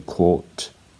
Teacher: The final R is generally not pronounced in Australian English as well.